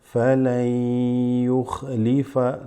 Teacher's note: But because it's followed by a ya, okay, this noon kind of drops off and you're going to go straight into the ya